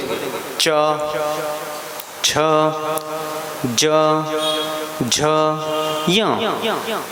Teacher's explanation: आप जब च वर्ग बोलेंगे, च छ ज झ य, तो जीवा ऊपर टकराती है